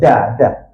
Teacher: Huruf dal eh huruf d ni hujung lidah dekat langit-langit.